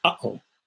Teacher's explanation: Between the and the oh, there's kind of like a breaking off of the air. You kind of like close your throat. You kind of stop the flow just really briefly. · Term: glottal stop